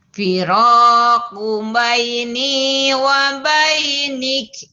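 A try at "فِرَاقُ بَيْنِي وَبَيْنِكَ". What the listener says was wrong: Hamzahnya mana? Wa bainik.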